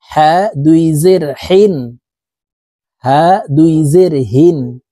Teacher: হা এটি হলো হালকের শুরু থেকে পড়তে হবে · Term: ছোট হা